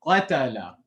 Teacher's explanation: So when Qaaf has a haraka, the tongue is obviously, the back of the tongue is touching the upper soft palate fully. But when we have to say the fatha damma kasra, you have to let go of that area and then say the fatha, dhamma, or kasra.